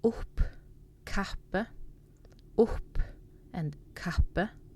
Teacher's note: if you have two p, then it's a little bit more like an aspirated sound